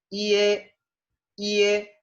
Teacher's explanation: tiene un sonido más bien parecido al de la E en español, quizás un poco más abierta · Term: final IE